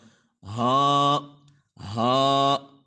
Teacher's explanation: حلق کا گلے کا جو آخری حصہ ہے وہاں سے ادا ہوگا